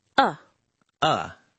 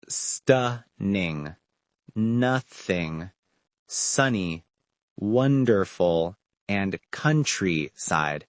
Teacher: To make that sound, my jaw's a little open, my lips are relaxed, and the sound comes from the back of my throat. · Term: short u sound